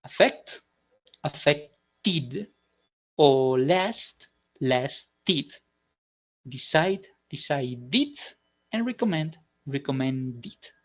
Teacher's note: Well, if we already have a word, or more precisely, a verb that already ends in t or d sounds, then this verb, the past form in the past form or the past participle form is going to sound like id